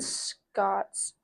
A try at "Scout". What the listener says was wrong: Scout. It's spelled C-O-U-T. Scout. Scott with a U.